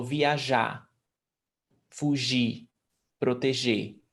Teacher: AR, IR, or ER, the R at the end is never pronounced. So viajar, fugir, proteger.